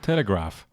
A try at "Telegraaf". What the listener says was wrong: Yeah, that's the English version. Graaf.